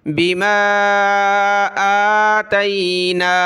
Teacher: लियकफुरू, लियकफुरू बिमा, बा ज़ेर बी, मीम अलिफ मद ज़बर मा, मीम को खींचना है, इसके ऊपर मद है